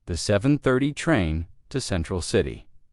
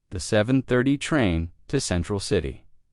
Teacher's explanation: Do you notice how to almost disappears? It blends into the next word sounding like central city.